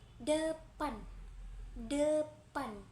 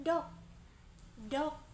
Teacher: lidah ditempelkan ke gusi dan pita suara bergetar, lalu udara dilepaskan secara tiba-tiba